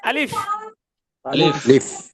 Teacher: আলিফ এবং হামজা টান হবে না। টান হবে না টান মানে হবে না। তাড়াতাড়ি পড়তে হবে, আলিফ এবং হামজা তাড়াতাড়ি পড়তে হবে।